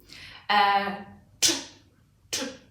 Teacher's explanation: very short, finite, not possible to continue it